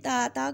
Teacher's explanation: زبان کا کنارہ اوپر والے دانتوں کے، جو اوپر والے سامنے والے دو دانت ہوتے ہیں ان کے مسوڑے کے ساتھ، ان کی جڑ کے ساتھ لگے گی زبان کی نوک، تو وہاں سے ادا ہوگا.